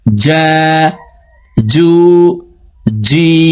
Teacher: জিম হরফের উচ্চারণ জিহ্বার মধ্যখান থেকে পড়তে হবে